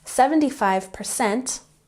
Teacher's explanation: with emphasis on the second syllable